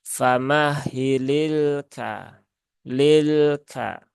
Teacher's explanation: tawasud itu tidak berhenti secara mutlak tapi juga tidak terlalu mengalir nah dia di tengahtengah ya jadi ee tunaikkan